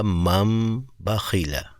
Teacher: نون کے بعد جب با آئے گا نا تو ہم نے اس کو میم میں کنورٹ کر دینا ہے